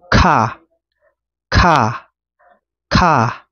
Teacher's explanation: ay mahaba pero may hangin